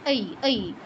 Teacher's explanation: তারপর ऐ, ऐ, ऐ ভাঙলে আমরা বলেছিলাম অ আর ই পাই, এজন্য অ এর উচ্চারণটা করে ই এর উচ্চারণটা করে দিলে ऐ এর উচ্চারণ হয়ে যাবে ऐ, ऐ। ওই নয়, ওই বললে ঠোঁট আবার গোল হয়ে যায়, ঠিক আছে, ऐ, ऐ, ওই নয়।